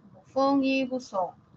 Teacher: ambas la fa y la Za son fricativas